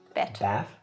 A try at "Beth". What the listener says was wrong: No, not Bet. Bet is something else. You don't go Bet. Bet. Beth.